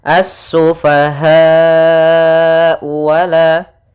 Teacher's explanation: Mad wajib muttasil itu kita panjangkan sepanjang 4 harokat.